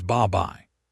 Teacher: Instead of saying bapai with a hard stop, Koreans slide the B over into the second syllable, and it comes out as babai. The B is not lost. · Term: Linking